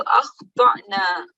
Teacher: it should be pronounced with a soft jerk, okay, from the bottom of the throat. So it's not like an ayin sound, not yarminuna.